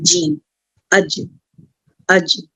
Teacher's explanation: زبان کا جو سینٹر پوائنٹ ہے, وسط زبان جو ہے اور اس کے مقابل اوپر تالو کو ٹچ ہوتا ہے